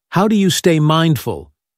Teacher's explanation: For open questions like, how do you stay mindful? The pitch falls.